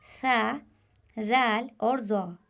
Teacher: जबान की नोक जब ऊपर वाले दो दांतों के किनारे पर लगे तो उससे सा जाल और ज हरूफ अदा होते हैं